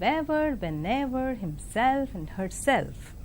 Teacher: And compound words which have stress on the second element, that is this compound words which end with ever or self, they take stress on the second element